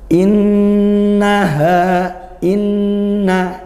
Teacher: Nun bertasydid dibaca dengung ghunnah